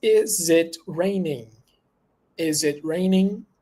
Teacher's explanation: that's when we ask with a rising intonation at the end